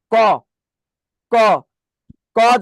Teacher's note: যেমন উচ্চারণ করেন ক, ক, ক যখন উচ্চারণ করে দেখেন, ক উচ্চারণ করার আগে জিভ উপরের তালুর সাথে কিন্তু লেগে যায়